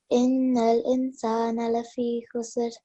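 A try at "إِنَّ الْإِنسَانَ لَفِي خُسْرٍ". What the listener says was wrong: Okay, a bit longer. Again, lafi, when you read it earlier, you didn't prolong this, okay? So it's lafi.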